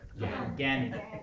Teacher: In Bengali, they will not do the ya even. It becomes ga, gan.